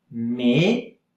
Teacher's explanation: And the T at the end, you don't hear it.